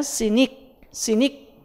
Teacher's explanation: unreleased 되기 때문에 크 사운드가 잘 들리진 않지만 그 C가 크 발음 나는 거죠